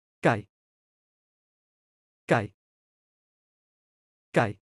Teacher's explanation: Falling tone, sliding down. Think of sliding down a playground slide with your voice.